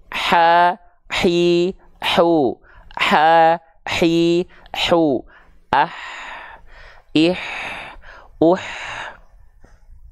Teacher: banyak yang bilang hak kecil ini dengan hak pedas ya Jadi kalau H kecil ini tepat dilafalkan dari bagian tengah tenggorokan otomatis nafasnya akan berbisik atau seperti orang kepedesan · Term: hams